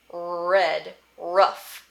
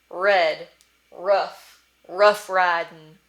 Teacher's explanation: velarized or pharyngealized, which again just means soft palate, throat, so you're moving the sound back in your mouth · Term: hard R